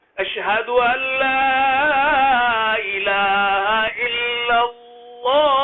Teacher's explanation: اگلا لا جو ہے چونکہ لا کے بعد حمزہ ہے اور یہاں پہ مد منفصل ہوگی جو 2 سے 3 الف کے برابر ہوتی ہے، لہذا اشہد اللہ، اس لا کو تھوڑا سا 3 الف کے برابر لمبا بھی کرنا چاہیے